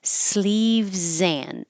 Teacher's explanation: think of this as just no D, just sleeves and or sleeves in, because you don't have to make a good at all, because it's not important, it's not stressed, it can get shorter and it sound like sleeves in.